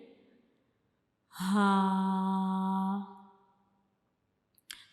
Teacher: यानी हम इसे अपने हलक से अदा करते हैं। अपने गले से अदा करते हैं। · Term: हरूफ हल्की